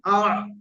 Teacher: হালাকের বা কণ্ঠনালীর মাঝখান হতে উচ্চারণ হয় আ। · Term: আইন